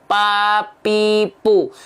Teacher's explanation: kalau huruf P yang nempel itu antara bibir atas bibir bawah Pau kalau teman-teman melafalkan menyentuhkan k dua bibir antara bibir atas